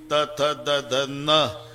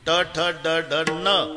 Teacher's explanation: बाणाचा न, नळ्याचा न, उच्चार तर सारखेच आहे ना, पण भानगड काय आहे. नळ्याचा न उच्चारा तर जीभ दाताला स्पर्श करणार, बाणाचा न उच्चारा अजिबात दाताला लागत नाही, टाळूला.